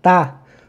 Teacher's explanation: O tá é a minha sílaba tônica.